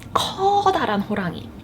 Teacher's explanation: I lengthened the first syllable in 커다란, and that intensified it for me.